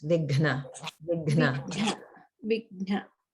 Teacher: the Gha Maha prana because it's combined with Na. So it's definitely harder to pronounce it there and takes a bit of practice.